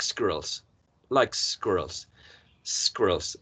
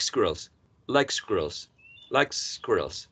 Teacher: So the s tends to be pronounced with the tongue in the hard palate, not in the alveolar ridge. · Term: assimilation